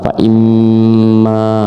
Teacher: Kemudian faimma. Nah, ini adalah mim musyayadah harus ditekan. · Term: mim musyayyadah